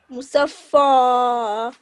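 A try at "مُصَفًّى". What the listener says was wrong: Yes, but try not to make your mouth round when you say the fa letter. Open it nice and wide. So say musaffan, musaffa.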